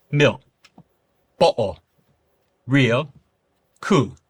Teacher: the L sound which does become more vocalized especially at the end of words